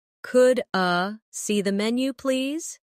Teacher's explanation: Could I see the menu, please? In fast speech, could I sounds like could a